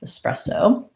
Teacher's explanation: espresso, is a second syllable stress. And so this first sound is either like an like red tent, or even a schwa, like espresso.